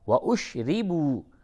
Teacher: اشربو را کو باریک کر کے پڑھیں زیر ہے و اشربو واو مدہ ہے اسے تھوڑا سا کھینچیں